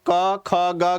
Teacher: ध्वनि कहां से निकल रही है कंठ से निकल रही है